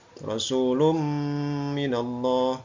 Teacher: Mim termasuk huruf idgham bil gunnah, ya. Rasulum dibaca dengan dengung